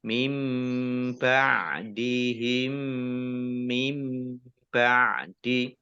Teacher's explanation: Ditandai mim sukun ya, mim sukun dibaca gunnah atau mendengung, ditahan 2 harokat